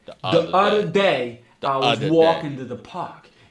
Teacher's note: The D replaces the voiced and the voiceless th